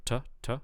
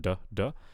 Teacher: you want a voiceless stop at the end